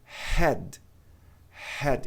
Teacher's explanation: o H tem som aspirado, ou seja, ar passando pela garganta.